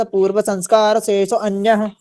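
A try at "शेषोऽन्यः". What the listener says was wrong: हाँ, अब जैसे शेषो अन्य कहते हैं ना, तो शेषोन्य कहना है इसको, मतलब ये आपको उच्चारण में शुद्धि करवा रहा हूं, ठीक है ना। हाँ तो शेषोन्य, तो अब जैसे आप शेषो अन्य कहेंगे तो वो इस उच्चारण अलग अलग दिखा रहा है ना,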